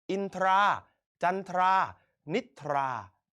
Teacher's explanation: เราอ่านออกเสียงทั้งททหารและรอเรือ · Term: ควบแท้